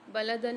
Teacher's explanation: بلدن میں دال کے اوپر دو زبر آ رہے ہیں، یہاں دو زبر کی تنوین کے بعد اظہار ہلکی والا قاعدہ ہو رہا ہے، غنہ نہیں کریں گے۔